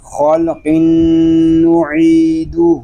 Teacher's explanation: خا اور قاف اس لیے پر ہیں کہ یہ دونوں حروف مستعلیہ میں سے ہیں